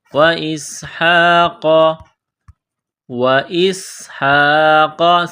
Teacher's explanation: سین میں سیٹی کی آواز پیدا کرنی ہے، سین کو باریک کرنا ہے